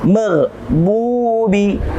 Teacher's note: ada dhammah bertemu dengan waw sukun atau waw yang mati, berhukum tajwid mad tabi'i. Kita baca dua harakat.